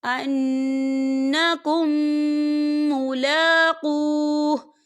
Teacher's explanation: ادغام شفوی ہوگا اور ہم اسے غننے کے ساتھ پڑھیں گے